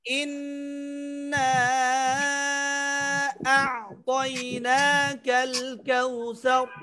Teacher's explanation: ইন্না এক আলিফ পরিমাণ গুন্না, ওয়াজিব গুন্না, তারপরে নাতে 3 আলিফ মাদ। আ'তাইনা এখানে এক আলিফ মাদ আর কোথাও মাদ নেই